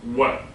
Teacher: English W is bilabial, remember? W, like you're kissing someone